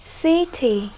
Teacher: Stress on the first syllable. Chúng ta sẽ nhấn vào âm tiết số 1.